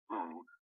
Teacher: if you try to say ooh the first sound you make is a glottal stop